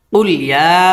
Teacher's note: এখানে 3 আলিফ টান হবে, এটা হচ্ছে মদ্দে মুনফাসিল